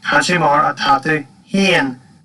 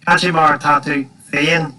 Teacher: I pronounce that with H sound, not with an F. That's because that's an Ulster thing, and is also found in other dialects as well.